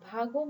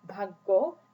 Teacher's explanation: For example, the word bhago means go away, but if the medial consonant go is replaced by its geminate form bhaggo, the meaning becomes luck